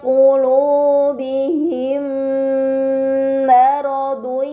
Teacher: pada kata qulubihim maradun, terdapat mim sukun bertemu dengan huruf mim, ini dinamakan idgham mimi, maka mim sukun dibaca secara melebur tanpa gunnah yang dipanjangkan.